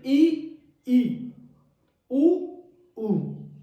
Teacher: इसमें क्या होगा, उच्चारण के समय जीभ की ऊंचाई अधिकतम रहती है इसमें, तथा मुख है वो संवृत यानी बंद हो जाता है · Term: संवृत स्वर